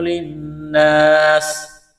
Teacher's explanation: الف سے پہلے زبر ہے، ایک الف کے برابر کھینچنا ہے، سین میں سیٹی کی آواز پیدا کریں گے، سین کو باریک کرنا ہے ، یہاں پر وقف کریں گے تو سین کو ساکن کریں